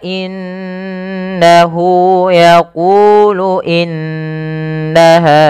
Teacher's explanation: ada huruf nun berharakat tasdid ini kita baca dengan bacaan gunah dengan cara menahan suara bunyi nunnya dan dimasukkan ke rongga hidung sepanjang dua harakat